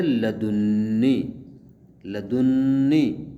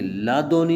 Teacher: رہے، لادونی اگر پڑھیں گے تو بغیر نون وقایہ کے ہوگا، لدنی تشدید کے ساتھ پڑھ رہے ہیں، اور دو نونیں جب اکٹھی ہو جائیں تو ایک دوسرے میں ان کا ادغام ہو جاتا ہے ، ادغام ہوا ہے دو ہم جنس حروف، لدنی پڑھ رہے